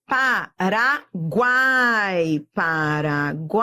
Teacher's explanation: Semivogal, vogal, semivogal. Tritongo.